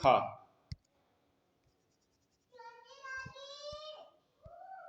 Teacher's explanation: स्पर्श व्यंजन कंठ ध्वनि, अघोष और महाप्राण ध्वनि है।